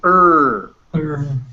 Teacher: it's an r colored schwa